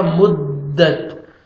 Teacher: میم کو دال کے ساتھ ملائیں گے سختی کے ساتھ اور تا کا لائٹ سے ساؤنڈ آئے گا